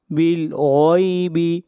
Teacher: غین کو موٹا پڑھیں گے، غین حروف مستعلیہ میں سے ہے